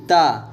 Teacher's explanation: ता एक दंत व्यंजन है, अल्पप्राण भी है, अघोष भी है।